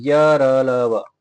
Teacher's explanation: य र ल व बहुत कम श्वास निकलती है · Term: अल्पप्राण